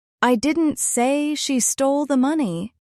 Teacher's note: If I stress stole, it means maybe she borrowed the money, but she didn't steal it.